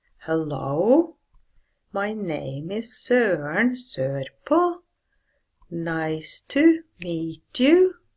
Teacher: in southeast Norway we tend to end our sentences on a rising melody